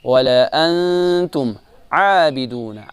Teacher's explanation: انتم یہاں اخفا ہے، اس کو ناک میں سے اس کی آواز نکالیں گے، نون کی آواز